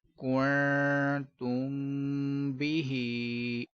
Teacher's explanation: اس میں میم ساکن کے بعد با ہے تو اخفاء شفوی ہوگا، غنہ بھی کریں گے